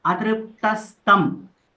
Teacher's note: Here we shouldn't stress on tra, okay? Because it is not a sayukta akshara.